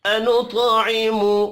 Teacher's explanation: طا حروف مستعلیہ ہے، پر پڑھا جائے گا، طا ساکن ہے، قلقلہ بھی کریں گے